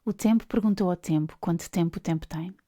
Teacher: The sound T is made with the tongue placed against the upper frontal teeth, whereas the sound P is a release of air after the lips were slightly pressed together.